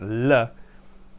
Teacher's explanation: It's called a lateral, meaning sides, and it's made with the side of the tongue here, lateral approximant, L, where your tongue touches behind your teeth, similar to a D, in fact, just like a D, except you curl the sides of your tongue down, or possibly one side, one or both sides of the tongue are curled down, allowing air to flow around the tongue.